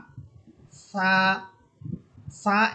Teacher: সা এর মাখরাজ হচ্ছে সিফাত সহ মাখরাজ হবে যে জিহ্বার আগা সামনের উপরের দুই দাঁতের আগার সাথে লাগিয়ে বাতাস বের করে নরম আওয়াজে এক আলিফ টানিয়ে উচ্চারণ করতে হবে। অর্থাৎ আমরা যে সা হরফ বলবো, এই সা হরফটা আমাদের জিহ্বার আগা অর্থাৎ জিহ্বার অগ্রভাগ সামনের উপরের দুই দাঁতের আগার সাথে লাগবে।